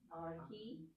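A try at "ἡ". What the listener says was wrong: Excellent.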